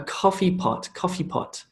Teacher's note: is speaking it's very fast and it's very connected those words a coffee pot coffee pot almost becomes like one big word